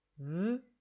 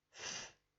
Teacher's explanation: The only difference is for v, I use my voice, so I feel some more vibration on my lip. For f, all I do is push out the air in a steady stream without using my voice, and so I also feel less vibration.